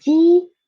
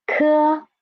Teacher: And ji, softer air, and qi, stronger air. That's the differences between unaspirated and aspirated initials.